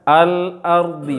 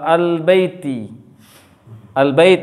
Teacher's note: maka lam itu dibaca jelas, tidak boleh gabung ke huruf setelahnya. Hukumnya izhar mutlak.